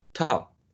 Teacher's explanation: So in the production of the first one, yeah, there is explosion, top, t, t. But in the production or articulation of the last consonant sound, you actually block the air with both lips, but you don't produce this plosion. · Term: stop